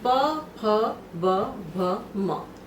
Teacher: इसके बाद आता है उपू पद्मानिया नाम ओष्ठो, यानी उ पवर्ग और प फ उपद्मानीय का उच्चारण स्थान ओष्ठ होता है। उ पवर्ग यानी प फ ब भ म, इनका उच्चारण स्थान ओष्ठ होगा